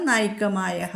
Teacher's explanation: നൈകമായഃ അത് ന ഏക, ഇവിടെ സ്വരസന്ധി വരുന്നതാണ്. ആയും ഏയും കൂടി ചേർന്നിട്ട് ഐ എന്ന് വരും. ന ഏക, ന എന്ന് പറഞ്ഞാൽ ന പ്ലസ് ആ ന, അവിടുത്തെ ആയും ഏകമായയിലെ ഏയും കൂടി ചേർന്നിട്ട് ഐ, അതുകൊണ്ടാണ് ന പ്ലസ് ഐ നൈകമായോ മായഹ എന്ന് പറയുന്നത് കേട്ടോ.